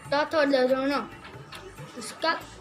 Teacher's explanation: उसका उच्चारण करते समय हमारी जीभ हमारे दंत को छूती है और तब उसका उच्चारण होता है। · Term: दंतीय